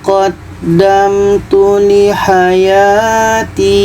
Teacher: Ti ini panjang ya mati atau mad asliah. Ketika berhenti tetap dipanjangkan panjang dua harakat.